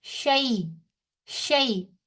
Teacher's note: याए लीन जो है वो बगैर खैंची अदा होती है